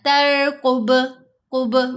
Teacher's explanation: بنی اسرائیل ولم ترقب قولی، ترقب، را کو نہیں ہلانا، ترقب ایسے نہیں کرنا، ترقب، قب با کو ہلائیں گے، با پر کلکلا ہے